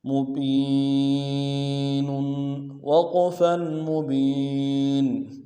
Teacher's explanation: ساتھ ملائیں گے، یا مدہ ایک الف دال میں کھینچیں گے، نون کی تنوین میں غنہ کریں گے، وقف کی صورت میں نون کو ساکن کریں گے